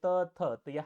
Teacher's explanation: त थ हा दंत्य वर्ण आहे